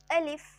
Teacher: الف، اور یہ الف منہ کے خالی حصے سے ادا ہوتا ہے، اور میں سیٹ پیچھے بتا چکی ہوں کہ الف جو ہے حروف مدہ میں سے ہے۔ الف، الف منہ کے خالی حصے سے ادا ہونے والا حرف ہے